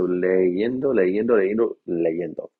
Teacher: if you say these quickly enough, with the I in there, you end up pronouncing it with the Y anyway